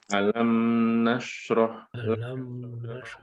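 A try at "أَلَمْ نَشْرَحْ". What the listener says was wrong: Jangan terlalu lama, ngalirnya jangan terlalu lama. Sedikit.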